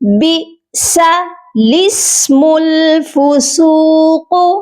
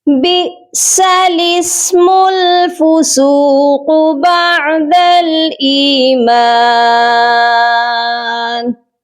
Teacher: دونوں الف کو ہم چھوڑ دیں گے، یہ نہیں پڑھے جائیں گے، یہ لفظ ایسے ہی پڑھا جائے گا بئس الاسم الفسوق، اوکے۔